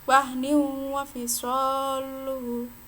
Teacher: Ini apabila ada nun sukun atau tanwin bertemu dengan ya, nun, mim, wawu, dan di sini ketemu dengan wawu, maka masuk ke idgham bi gunnah. Cara membacanya yaitu langsung masuk ke wawu dengan dengung.